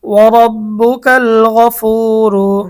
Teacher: এখানে রয়ের উপর পেশ, এজন্য রটা মোটা হবে।